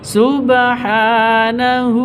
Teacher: Subhanahu, ha panjang dua ketukan atau dua harokat karena ada tanda berdiri di atasnya.